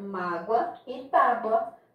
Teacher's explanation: Mágoa é com O, tábua é com U, mas a pronúncia do O e do U são iguais, ou seja, o O aqui tem o som de U